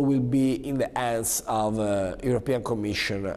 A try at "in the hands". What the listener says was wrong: Again, a problem of pronunciation. I think the leading roles will be in the hands, not ends, which is the finishing part of something. We need to use the H. Again, typical Italian, we don't pronounce the H and we don't have this sound, so to us doesn't really sound differently.